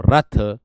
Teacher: जीभ की जो नोक है हमारी आगे हल्का सा कंपन जरूर देगी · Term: लुंठित व्यंजन